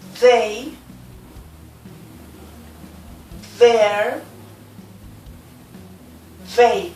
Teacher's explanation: It is very similar to the sound in Spanish. You need to locate the tip of the tongue on the teeth, letting the air out. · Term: voiced consonant